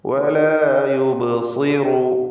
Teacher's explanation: ബഇൻ്റെ സുക്കൂൻ ഖൽഖല സുഗ്റ നൽകി ശബ്ദം ചലിപ്പിക്കണം. സ്വാദ് തഫ്ഖീമിൻ്റെ അക്ഷരമാണ്, ഇസ്തിഅലാഇൻ്റെ 7 അക്ഷരങ്ങളിൽപ്പെട്ടതാണ്. കസ്ർ വന്നതിനാൽ കുറഞ്ഞ തഫ്ഖീം കൊടുക്കുക.